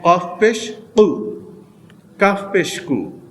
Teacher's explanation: ইউ, কফ পেশ উ, উ, কফ দুই নক্তাওয়ালা কফ, জিব্বার গোড়া, জিব্বার গোড়া তার বরাবর উপরে তালুর সঙ্গে লাগিয়ে দুই নক্তাওয়ালা কফ